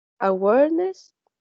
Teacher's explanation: It has three syllables, and the stress is in the second syllable.